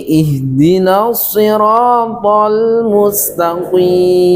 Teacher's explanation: Karena huruf ta mempunyai sifat istifal, yaitu tipis. Kemudian huruf qafnya mempunyai sifat isti'la, tebal, karena terangkatnya pangkal lidah ke langit-langit, sehingga huruf yang tipis terpengaruh menjadi tebal, sehingga dibaca ihdinas siratal mustaqim.